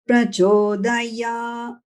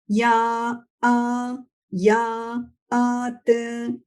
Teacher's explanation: The syllable ya is split into two notes. The ya is chanted on a middle note. The swarakshara, the vowel sound, is liberated from that syllable, ya, and chanted on a higher note. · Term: dirgha swarita